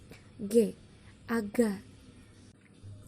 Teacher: Lalu selanjutnya ada fonem G. Sama, cara artikulasinya berada di plosif atau letupan dan tempat artikulasinya pun sama di velar atau langit-langit lunak